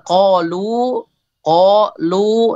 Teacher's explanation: ini lu-nya panjang itu karena ada lam dhammah, setelahnya ada wawu sukun